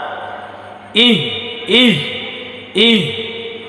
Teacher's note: এটা হচ্ছে এই হলক অর্থাৎ কণ্ঠনালীর শুরু হইতে হামজা হা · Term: গোল হা